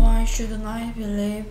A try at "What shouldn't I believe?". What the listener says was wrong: 자꾸 why로 들립니다.